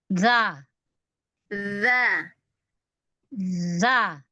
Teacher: Bukan za tapi dza. Jangan digeterin ujungnya nempel. Nempel. Kalau za itu enggak nempel.